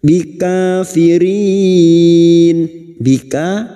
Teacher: Bikafirin, bika ka alif kecil di atas 2 harokat mad tabi'i. Firin bertemunya mat dengan huruf hidup yang dibaca waqaf mad arid li sukun, 4 harokat kita panjangkan.